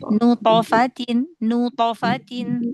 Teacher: Nut kan dia qalqalahnya tebal kan karena thnya kan huruf tebal ya.